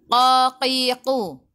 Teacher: Qaf kena baca dengan tebal. Qaqiqu, pangkal lidah menyentuh langit lembut dekat dengan nak tekak